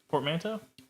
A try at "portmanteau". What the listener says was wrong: I think it's just portmanteau. I don't think you're supposed to hit the T that hard.